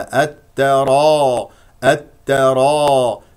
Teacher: بعدها حرف مشدد والتاء مشدده اذا تاء ساكنه ثم تاء مفتوحه والراء هنا مفخمه لانها مفتوحه وكذلك الالف التي بعد الراء مفخمه · ماذا نفعل في التفخيم نرفع اقصى اللسان لكي تفخم عندنا الراء والالف